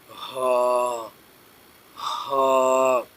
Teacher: ہا یہ سینے سے آواز نکالنی پڑتی ہے ہا کی